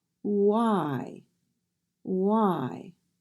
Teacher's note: remember the W sound is represented with the sound ooh